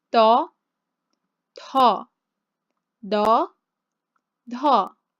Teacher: sets of two, no air, air, no air, air